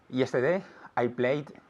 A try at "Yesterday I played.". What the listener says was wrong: I played with a D sound, not with a T sound. Los dos primeros verbos que vimos fueron con un sonido T, okay? Asked, for example, okay? But now play is with a D sound, okay? So played, played, okay?